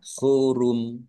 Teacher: Mimnya dibaca sukun karena wakaf dan dibaca pendek karena tidak ada panjangnya.